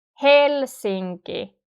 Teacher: The intonation is falling. It's going downwards. · And one important thing about the Finnish pronunciation is that the word stress is normally always in the first syllable. So hel is the first syllable and it's the strongest. Helsinki. The rest are not stressed.